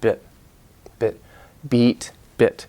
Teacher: It's really, really complicated, and one more thing I should say about like the bit-beat distinction, the bit-beat vowel, E, long vowel, E, and your tongue is kind of, it's like the Korean E, but your tongue, it's longer in English, beat, and in bit, it's shorter, but your tongue is more relaxed. Your tongue is a muscle, so it's relaxed, and so it's actually in a different position.